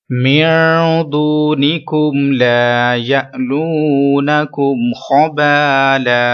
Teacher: واو مدہ ہے 1 سیکنڈ لمبا کریں گے.